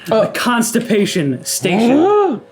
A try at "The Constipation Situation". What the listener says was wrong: Situation. It's not station, it's situation. Reread.